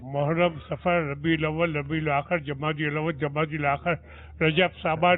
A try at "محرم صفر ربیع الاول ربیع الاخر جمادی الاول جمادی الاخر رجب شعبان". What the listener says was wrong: سانس ٹوٹ گیا آپ کا. سانس ٹوٹ گیا بابو, سانس ٹوٹ گیا. جو ہے نا کہ ایک سانس میں ایک سانس.